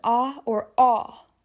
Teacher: Americans say the letter A as A, but the Irish pronunciation is ah or aw.